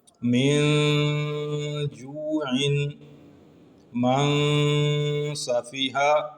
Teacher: یہاں پر نون ساکن پہلے کلمے میں اور جیم اور سین جو حروف اخفاء ہیں وہ دوسرے کلمے میں آئے تو اخفا کیا ہم نے